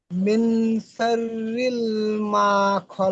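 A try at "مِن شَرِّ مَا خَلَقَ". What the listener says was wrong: শাররিল কোথায় আছে? শাররি, শাররি মা খলাক।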